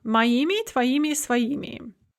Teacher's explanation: the plural ending is going to be a stressed ими